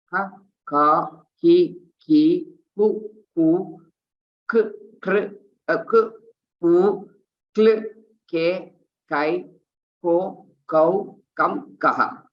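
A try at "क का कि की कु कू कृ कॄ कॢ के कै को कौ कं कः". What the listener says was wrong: Uttamam.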